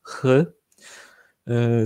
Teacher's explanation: H et CH, pour la plupart des Polonais, ça se prononce de la même manière.